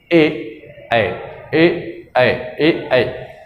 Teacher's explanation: कंठ तालु, जो कंठ और तालु दोनों से बोले जाए